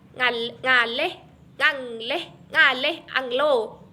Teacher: merupakan kontoid nasal, dorsovelar dan bersuara